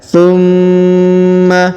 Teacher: huruf Ma ditahan dan ditekan karena terdapat tanda tasdid